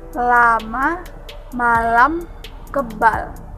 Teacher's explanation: selanjutnya l disebut juga konsonan lateral alveolar termasuk bunyi suara yang terbentuk dengan menempelkan daun lidah pada gusi dan mengeluarkan udara yang melewati samping lidah